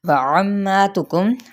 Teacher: عین کو وسط خلق سے ادا کرتے ہوئے میم پہ غنہ کریں گے، یعنی ملانا بھی ہے اور غنہ بھی کرنا ہے، اور ساتھ ہی الف مدہ کا قائم مقام ہے، ایک الف کھینچنا بھی ہے۔